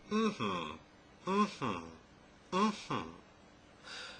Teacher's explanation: that's voice too but the sound is a nasal sound that is the air is only being released from your nose try making it with your mouth and nose blocked you can't